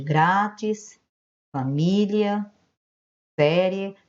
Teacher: Aí você está vendo a acentuação de grátis, família, série, estão com acento agudo porque tem o som aberto